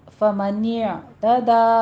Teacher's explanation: فمن یہ جھٹکا نہیں دینا، نہیں کہنا. فمن اعتدى دا میں الف مدہ ادا کریں گے، فتح قائمہ ہے، 2 کاؤنٹ کرنے ہیں